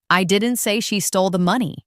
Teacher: Now, let's emphasize the word she. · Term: emphasis